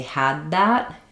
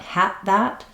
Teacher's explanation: in this case it's using an unreleased D , you might just drop that D because you're not hearing